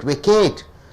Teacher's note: You are stressing on Kate.